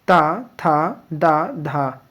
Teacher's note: त थ द धा यह दंत से बोले जाते हैं